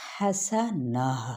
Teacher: حسنتم یعنی واو کو جیسے تشدید کے ساتھ کیا ہے ادغام مع الغنہ کیا جاتا ہے ویسے. اور اگر ہم وقف کریں گے تو یہی گولتا ہاں میں بدل جائے گی. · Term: تائے مربوطہ